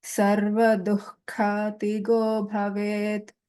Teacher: So here, Jihva Mulya, the Visarga takes a Jihva Mulya sound. So Sarva Dukha Tigo Bhavet.